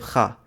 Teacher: the voiceless velar fricative kha, appearing in languages like Mandarin, Spanish, Farsi